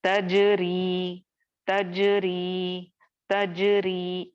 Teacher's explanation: तजरी, तजरी, तजरी, यहाँ पे चूंकि रॉ के नीचे कसरा या जेर आ रहा है तो हम रॉ को यहाँ पर बारीक पढ़ेंगे, मोटा नहीं करेंगे